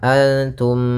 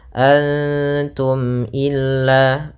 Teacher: Cara membacanya adalah suara mimnya tidak boleh ditahan, antum, tidak boleh seperti itu, tapi jelas antum illa. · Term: izhar syafawi